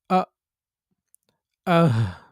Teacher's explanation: অর্থাৎ কন্ঠনালীর শুরু হতে হামজা এবং হা উচ্চারিত হয়।